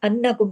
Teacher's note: नून पे तशदीद है तो यहाँ पे अन नून पे गुन्ना होगा। अन इसको ढीला ढाला और ऐसे जल्दी से पढ़ के निकल नहीं जाना है।